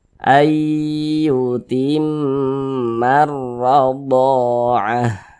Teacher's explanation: Maka huruf yang memiliki tanda baca fathah yang berposisi tepat sebelum huruf alif, maka huruf tersebut dibaca panjang. Sehingganya do dibaca panjang. Mad tabi'i panjangnya 2 harokat.